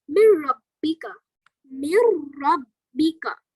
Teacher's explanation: So we are not pronouncing the noon, but we are pronouncing ra. We are not even doing the gunna. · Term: idgham tam bila gunna